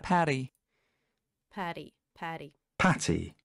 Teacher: Двойная T в американском английском превращается во flap T, patty. Там такое подобие мягкого D.